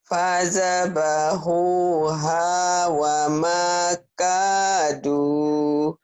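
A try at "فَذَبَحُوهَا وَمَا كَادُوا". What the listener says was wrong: Fadzabahuha wa makadu. Jangan wa makadu ya. Kedengarannya kayak ada hak kecil. Wa makadu. Coba lagi. Jangan ada haknya.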